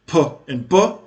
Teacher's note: p and b are bilabial, produced in the front using both lips